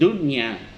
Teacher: ada nun sukun bertemu dengan ya, ini tidak didengung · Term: izhar wajib